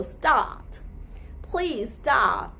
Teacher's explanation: we can easily remove the ra before the consonant and make it or fill the gap with the long ah vowel sound. So start. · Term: British pronunciation